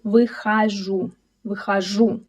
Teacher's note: all unstressed о in words are pronounced as а · Let the tongue relax for it. Also, here we see a reduced o, which turns into a. This is a rule, because all unstressed o in words are pronounced as a. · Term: reduced о